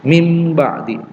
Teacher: nun sukun bertemu dengan ba, cara membacanya dengan mengganti nunnya dengan mim